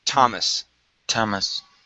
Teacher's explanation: And the last one here, this name, okay, instead of Thomas, it's Thomas. It's probably one of the only times we don't pronounce that TH.